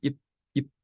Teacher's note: And so the P takes the vowel and it shortens it.